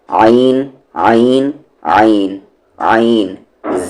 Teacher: عین کا مخرج ہے یعنی کہ عین کا ایگزٹ ہے بیچ والا حلق مڈل تھروٹ